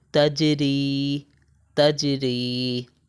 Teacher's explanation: تو یہاں پر دیکھیں ہم یہاں پر قلقلہ کر رہے ہیں، جیم کے اوپر ہے جزم، جیم کے اوپر ہے ساکن، تو یہاں پر ہم قلقلہ کریں گے۔